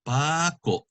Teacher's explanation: The accent is on the second to the last